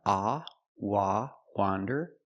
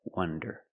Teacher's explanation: Wander with the open sound, ah, wah, wander, and wonder with the closed sound, wonder.